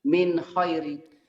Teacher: Tanpa ada ditahan, tanpa ada ikhfa, tanpa ada dengung. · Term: idhar